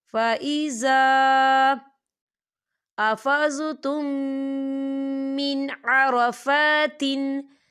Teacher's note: خالی الف سے پہلے زبر ہے اور اس پر چھوٹی سی مد بھی ہے تو ہم اسے 4 حرکت کے برابر کھینچ کے پڑھیں گے